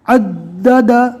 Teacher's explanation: تشدید والی دال کو ڈبل پڑھنا ہے اور اس کے بعد یہ دال ہے، کل ملا کر 3 دال ہو گئی